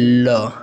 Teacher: ऐसा वर्ण जिसके उच्चारण में वायु यानी कि जो अंदर से हवा निकलती है जीभ के दोनों बगल से निकल जाती है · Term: पार्श्विक